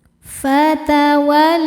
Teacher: bisultanim mubin fatawalla la hukumnya mad thobi'i muqaddar karena lam berharakat fathah panjang cara bacanya panjang dua harakat